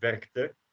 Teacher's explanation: So K and T is easier to pronounce than a K and the D. Werkte is easier because you have two consonants where you don't vibrate your voice box. And otherwise you have one consonant where you don't and one where you do. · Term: unvoiced consonants